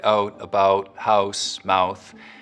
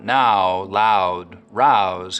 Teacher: raising the start of the diphthong in words like out and about, so that instead of it starting very open, ow, it's starting from somewhere in the middle of the mouth, oh. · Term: Canadian raising